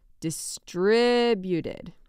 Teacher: going to say that one more time not distributed but distributed emphasis on that RI there in the middle